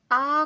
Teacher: यहाँ आ में जीभ का पीछे का भाग हिल रहा है। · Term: पार्श्व स्वर